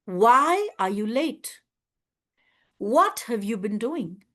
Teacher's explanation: when I ask a question interrogation, then my tone goes down and it's called a falling tone. Falling tone is from this level to this level.